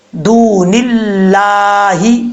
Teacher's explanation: بریک پڑھیں گے، موٹا نہیں پڑھیں گے، کیونکہ اس کے پہلے سے زیر ہے